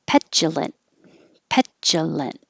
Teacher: Hold the T at the end. Stoutly, hold the T because you don't need to release it.